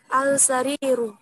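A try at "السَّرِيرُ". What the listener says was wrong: Jangan diberi Ini adalah Asyamsiyah. itu alnya tidak dibaca. Dia langsung seperti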